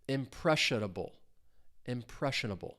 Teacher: stress is on that second syllable. Four syllables total.